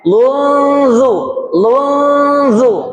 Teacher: Ini huruf zo. Huruf zo itu huruf di ujung lidah bertemu ujung gigi, termasuk jauh dengan nun. Jadi nggak terlalu n. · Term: ikhfa